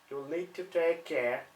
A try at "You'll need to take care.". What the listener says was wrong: Do you hear the intonation again? Try and keep it level.